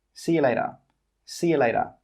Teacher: And we don't say 'later'. We say 'layduh'.